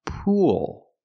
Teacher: Then I'm linking to the dark L where I tense my tongue together.